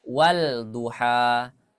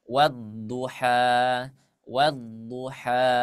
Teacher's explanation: langsung tasdid langsung ke huruf yang syamsiahnya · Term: Idgham Syamsiah